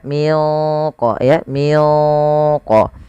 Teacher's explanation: membaca huruf qf yang sukun yaitu wajib dipantulkan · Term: Qalqalah